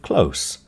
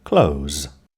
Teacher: The adjective close has the s sound, but the verb close has the z sound. This is because the sound in the verb close comes between two vowel sounds.